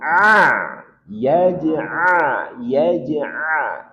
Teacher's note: huruf ain dari tenggorokan bagian tengah. Ini pangkal, naik sedikit, tengah, tekan.